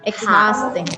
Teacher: so the stress is on the second syllable